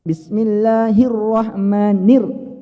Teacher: mengangkat suara atau mengangkat intonasi mengangkat intonasi pada huruf yang bertasydid